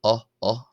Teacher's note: This is like the o in the English word top, so a short o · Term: short o sound